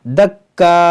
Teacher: جب رکیں گے تو یہ حمزہ ساکنہ ہوگا، اور جو حمزہ ساکنہ ہوگا تو اس میں جھٹکا ہوگا